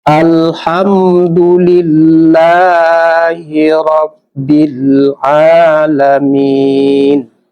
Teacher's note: Roh itu hukum bacanya juga tafkim, itu tebal karena berbaris di atas.